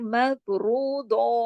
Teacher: مف رو کو موٹا کر کے پورا منہ بھر کے پڑھا جائے گا. پھر مف رو دو, اب دو جو ہے دعات جو ہے یہ موٹے حرفوں میں آتا ہے نا, حسنہ دقتن کز, تو اس کو بھی ہم ہیوی کر کے پڑھیں گے. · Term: را موٹا